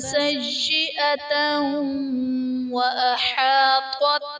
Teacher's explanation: سیئۃ وأحاطت میں تا پر دو زبر کی تنوین، تنوین کے بعد حروف یرملون میں سے واو ہے تو یہاں پر ادغام مع الغنہ کا قاعدہ ہوگا، یعنی تنوین میں ہم غنہ کر کے پڑھیں گے